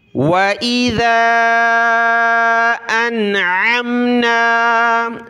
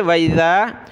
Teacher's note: ذال پر زبان نکال کر اس کو کھینچنا ہے مد کی وجہ سے